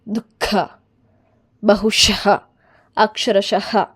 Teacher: ಇನ್ನು ವಿಸರ್ಗದಲ್ಲಿ ಉಸಿರನ್ನು ಹೊರಗೆ ಬಿಡ್ತೀರಾ.